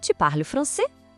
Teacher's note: O primeiro, mais simples de todos, é só mudar a entonação. Subir o tom de voz no final da frase é o jeito mais informal.